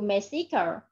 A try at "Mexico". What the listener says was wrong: No, Mexico, trong âm âm một.